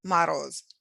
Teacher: the vowel sound before the stressed position is written as letter O, but sounds closer to A